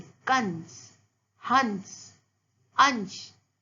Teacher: जब मैंने अंश बोला तो अ और श के बीच में आपको न की ध्वनि सुनाई दी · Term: अनुस्वार